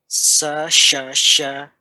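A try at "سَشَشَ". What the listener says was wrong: Ya, agak ditinggikan nadanya Pak. Sasyasya Ya, jadi iramanya seperti ini ya Pak. Sa'asya, sasyasya, zatasya.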